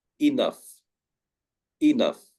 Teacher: we do not say the GH. In fact, we pronounce it like an F.